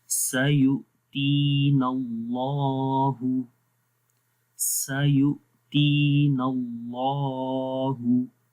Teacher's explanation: اس سے پہلے زبر ہے تو اللہ کا نام موٹا پڑھیں گے، یعنی کہ لام کی ہم بات کر رہے ہیں تو لام موٹا ہو جائے گا